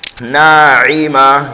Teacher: گول تا کو ہائے ساکنہ سے بدل دیں گے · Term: وقف بالابدال